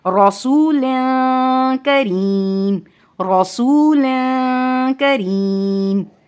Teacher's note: کاف باریک حروف میں سے ہے تو یہاں باریک غنہ ہوگا، باریک اخفا ہوگا